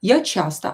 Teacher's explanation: Я часто, so do not say часто. Here O is not stressed, so we will pronounce it as a.